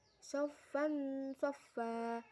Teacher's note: Pada ayat 22, soffan soffa terdapat hukum bacaan ikfa karena fa berharokat fathah tanwin bertemu huruf shad. Membacanya samar dengan dengung dan ditahan selama 3 harokat.